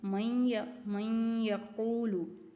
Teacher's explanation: नून साकिन के बाद या हरूफ यरमलून में से था तो यहाँ क्या है, इदगाम बा गुन्ना हो रहा है